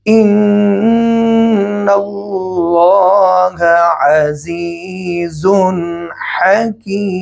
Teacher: 2 پیش کے اوپر جب ہم وقف کریں گے تو اس کو محسوس نہیں کرائیں گے، صرف ہونٹوں سے 2 پیش کی طرف اشارہ کریں گے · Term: اشمام کا وقف